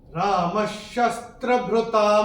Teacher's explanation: चूंकि यहाँ पे श आ रहा है तो ये विसर्ग का उच्चारण होगा आधा श। तो ये विसर्ग को हम अपनी किताब में स्ट्राइक ऑफ करके आधा श ऐसे लिख के रख सकते हैं।